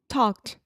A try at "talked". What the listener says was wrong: Pretty good.